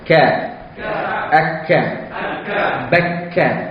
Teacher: Dia huruf hamas tapi hamas yang paling ringan.